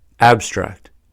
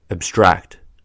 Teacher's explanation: Abstract, to extract, withdraw, isolate. When used as a noun or adjective, the stress is on the first syllable, abstract. When used as a verb, the stress is on the second syllable, abstract. Absurd, illogical, irrational, implausible.